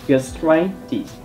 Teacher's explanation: Khi mà các bạn phát âm các thuật ngữ kết thúc bằng -itis, các bạn hãy nhấn trọng âm vào -itis, gastritis. Đây là một thuật ngữ mà trọng âm của nó sẽ rơi vào âm tiết đầu tiên của hậu tố